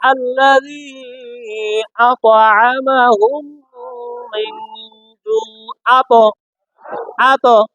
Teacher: ত এর উপর সাকিন থাকলে কলকালা করে